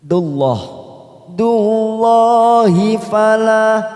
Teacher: Dullah dalam jalalah karena didahului dhamma pada huruf dal maka kita baca tafkim